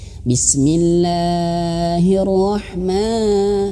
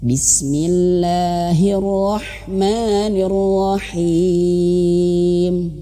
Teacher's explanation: panjangnya itu hanya cukup dua harakat saja